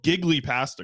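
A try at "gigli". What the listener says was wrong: Giggly. The GLI in Italian is not pronounced glee. No. It's like G, basically. I just know that second part is G.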